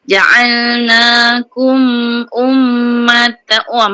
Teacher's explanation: mim tu kena dengung lama, okey dengung mim sabdu, ummatan tamim waw ma'al gunnah, wasa nipis.